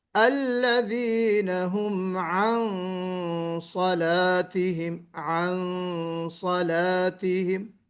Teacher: عن اس میں ہم منہ بھر کے پڑھ رہے ہیں، فل ماؤتھ کی طرح، فل ماؤتھ لیٹر کی طرح. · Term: اخفا